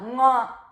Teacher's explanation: Ipa ka varga sthanam, ucharana sthanam is kantha. Kantha plus nasal is the last letter of ka varga.